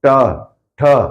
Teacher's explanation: मूर्धन्य में जीभ मुड़ के ऊपर जाएगी।